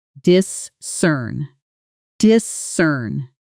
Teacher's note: with the stress landing hard on that second syllable, cern